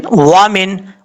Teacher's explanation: वाव को पढ़ते वक्त होंठ गोल करेंगे